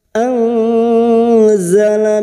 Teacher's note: ladzi nun sukun bertemu Zain nun sukun bertemu Zain ikhfa Hakiki kita samarkan bunyi nun sukun dan mendengung selama tiga harakat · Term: ikfa hakiki